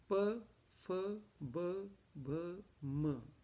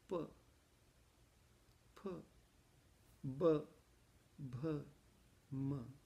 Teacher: The two lips are necessary to create the sound of P, P, B, B, M. If your lower lip is cut off, you cannot create the sound. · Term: labial sound